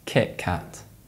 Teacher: T is replaced by K